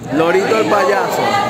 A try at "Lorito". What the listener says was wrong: No, Loquito tampoco, tú dijiste Loquito, ¿verdad?